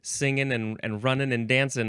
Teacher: in some speakers, the entire G sound disappeared at the end of those words